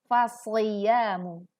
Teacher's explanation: Fasyamu, ada huruf shad, bukan huruf sin, maka tebalkan suaranya fasyamu.